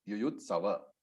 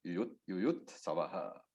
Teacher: Then the Visarga, the two dots at the end of Yuyutsavaha. So that Visarga takes the pronunciation of the alphabet just before the Visarga. So if the Visarga was not there, it would have been Yuyutsava.